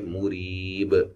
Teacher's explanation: وقفاً با پہ قلقلہ کو واضح کریں گے